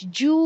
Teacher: واو مدہ ہے، 2 حرکت کاؤنٹ کریں گے